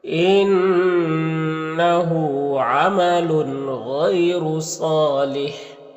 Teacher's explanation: را کے اوپر پیش اور را کو پر پڑھیں گے. صاد حروف مستعلیہ میں سے پر پڑھیں گے اور الف مدہ ہے، ایک الف کے برابر کھینچیں گے · یہاں پر یا ساکن سے پہلے غین کے اوپر زبر ہے تو یا لین ہوگا، سے نرم آواز کے ساتھ جلد پڑھیں گے. را کے اوپر پیش اور را کو پر پڑھیں گے · غین حروف مستعلیہ میں سے پر پڑھیں گے